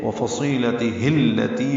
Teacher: تی یا مدہ ہے تو حرکات لمبا کریں گے